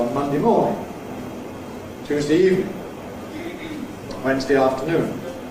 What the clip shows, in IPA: ˈmʌndi